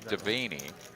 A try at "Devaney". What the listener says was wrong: Don't think about the vein. It's Vanny.